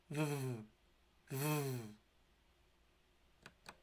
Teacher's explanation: The letter V is a voiced labial fricative